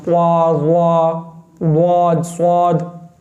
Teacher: Lips को round करते हैं। होठों को गोल कर देते हैं।